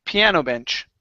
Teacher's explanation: just like peanut butter, we're going to stress the first word.